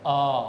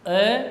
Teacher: यह आ दीर्घ स्वर है तो यह इससे डबल टाइम में बोला जाएगा